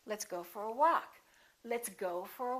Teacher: walk is going to get the stress